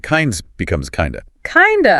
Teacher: the of sound often changes quite a bit. It frequently becomes that weak sound again, the schwa, or sometimes it almost vanishes into the flow.